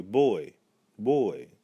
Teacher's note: there's a sort of half why pronunciation at the very end so those are our near diphthongs not quite one sound yet